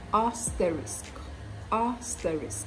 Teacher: notice that the stress is on the first syllable so it's not aspirisk or asterisks it's asterisk asterisk are stories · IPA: |ˈæstərɪsk|